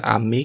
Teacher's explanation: a palavra ame que significa doce e tem o Tom mais forte no mê